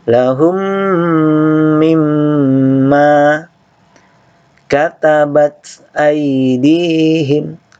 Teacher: idgham mutamathilain atau idgham mimi, didengungkan, mim ketemu mim. Lahum mimma, jadi sini dengung, ini juga dengung.